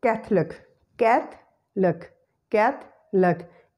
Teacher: The schwa sound is eliminated and it is no more pronounced.